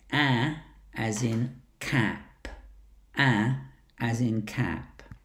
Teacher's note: the tongue is relaxed to the bottom of the mouth, but at the front still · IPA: /æ/